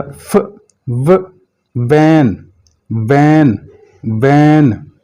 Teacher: फ और व में दोनों में ऊपर वाला दांत नीचे वाले होंठ से जाकर लगेगा।